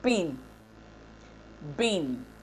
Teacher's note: the contrast between P and B phonemes of English, as in P, pin, bin, can be defined in terms of voicing and aspiration.